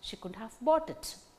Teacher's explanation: In the second unit, she couldn't have bought it. only bought gains stress. So, out of the tone units, only one main word gains stress depending upon sense conveyed by the sentence or that tone unit.